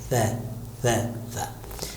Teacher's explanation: تو یہ جو سا ہے، حرف سا جس میں 3 نقطے ہیں، ثمر پھل والا، تو یہ اس میں کیا ہوگا کہ سین میں سیٹی زیادہ، صاد میں سیٹی کم، اور سے میں سیٹی بالکل بند، سیٹی ختم۔ تو حرف سا میں سیٹی کی آواز نہیں آنا چاہیے